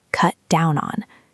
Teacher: Stress the word down.